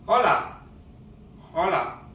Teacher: the letter H, if it is put in the beginning of a word, it's not pronounced at all. It's mute